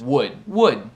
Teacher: Mas não se pronuncia o L e até o U. Tem a mesma pronúncia quanto a palavra madeira em inglês.